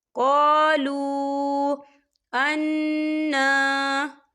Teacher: ملکا قالو، یا دیکھیے قالو، یہاں پر واو مدہ ہو رہا ہے، واو ساکن سے پہلے پیش ہے اور اس پر چھوٹی سی مد بھی ہے، تو ہم اسے 3 یا 4 حرکت کی بابر کھینچ کے پڑھیں گے